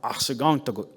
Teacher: It was a guttural sound, the R